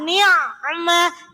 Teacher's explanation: ain sukunnya harus mengalir. Sifatnya rokhawa.